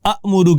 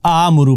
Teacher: پہلے حمزہ پہ زبر ہے لیکن دوسرا حمزہ ساکن ہے، تو زبر ہے اور دوسرا ساکن ہے، تو پھر ہم اس کو کھڑی زبر کے ساتھ یا الف مدہ کے ساتھ پڑھیں گے، جیسے آمرو ہے۔